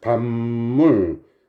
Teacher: 받침 비읍이 미음으로 발음됐죠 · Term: 비음